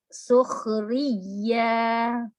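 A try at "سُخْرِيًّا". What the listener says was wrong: Ini kenapa ha-nya jadi ada he-nya?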